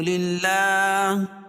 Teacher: اللہ کے لام سے پہلے زیر ہے تو اللہ کا لام باریک پڑھا جائے گا